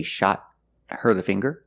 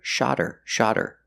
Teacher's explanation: I can use a stop t a shot her the finger but if I link the words then H is silent then you hear shodder shodder the T changes to a fast